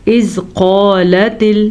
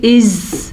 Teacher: زال نرمی سے پڑھا جاتا ہے، اگر ہم اس کو پڑھیں گے از تو یہ زا بن جائے گا